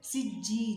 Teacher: سین کو باریک اور جیم کے ساتھ ملائیں گے. سجی، جیم یا زیر جی مد اصلی ہے، ایک الف کے برابر کھینچ کر پڑھیں گے